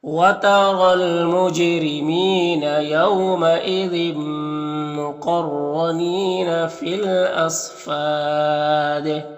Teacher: सग़द हुरूफ मुस्तालिया में से पुर पढ़ेंगे, और यहाँ पर वक्फ़ करेंगे तो मद्दे आरिज़ वक्फ़ी होगा, और दाल में कलकला होगा